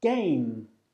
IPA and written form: geɪm (game)